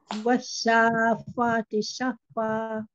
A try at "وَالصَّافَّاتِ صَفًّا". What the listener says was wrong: Yes, and stretch the fa more. Was-saffati saffa.